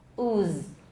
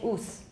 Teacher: When we say the final z, only the first half is a voice z, the second half is a tail of voiceless.